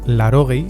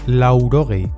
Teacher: Puede que escuches “larogei” en vez de “laurogei”, aunque en batua se mantiene esa <u>.